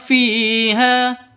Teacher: fi panjang dua ketukan karena ada ya mati diawali dengan kasrah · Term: mad thabi'i, mad asli